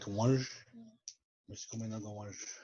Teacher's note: It has like an N towards it, like a nasal sound towards the end, like wanj.